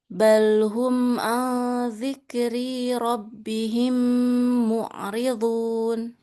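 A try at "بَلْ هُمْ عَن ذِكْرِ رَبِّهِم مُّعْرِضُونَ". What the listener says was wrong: Iya. Kalau iya, tapi ri-nya jangan dipanjangin. Dzikri rabbihim.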